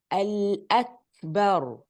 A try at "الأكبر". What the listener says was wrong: Yes, the hums is it's almost, it's difficult to hear it. So I know that you are doing it, but it's very quiet. So I want a little bit more of the hums.